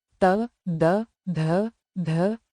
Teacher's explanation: इनका उच्चारण दांतों पर जीभ लगाकर होता है, इसलिए दंत्य व्यंजन कहलाते हैं।